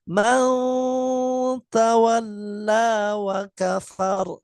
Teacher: Tetap harus ada dengung dari hidung. Tapi dominan samarnya yang lebih jelas. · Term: ikhfa aqrab